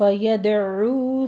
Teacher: यदउ में दाल के ऊपर कलकला करेंगे, अ में आइन वस्ते हलक से अदा करते हुए आगे वाव मद्दा अदा करनी है, दोनों होंठों को गोल कर लीजिए, 2 काउंट करना है।